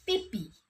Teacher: pada kata pipih itu pada akhir kata ada hembusan nafas yang menghasilkan fonem H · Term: vokal I